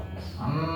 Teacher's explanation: Dengung. Ya, dengung niku nopo Mas? Yaitu kerasa di hidung kita niku Pak. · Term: ghunnah